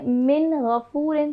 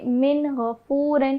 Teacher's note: اس کو ہم من غفور نہیں پڑھیں گے بلکہ ہم پڑھیں گے من غفور. تو وہ جو نون کا ساؤنڈ ہے اس کو ہم بالکل واضح کر کے پڑھیں گے ظاہر کر کے پڑھیں گے. کیونکہ دیکھیں نون ساکن کے بعد غین آ رہا ہے جو کہ حروف حلقی میں آتا ہے. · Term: اظہار